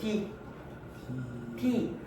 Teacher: 앞니 뒤편에 있는 딱딱한 이 잇몸을 건드리잖아요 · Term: 잇몸 소리